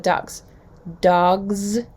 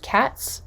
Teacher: we have a z sound for plural dogs and an s sound for plural cats what's happening is that s is voiceless and is following a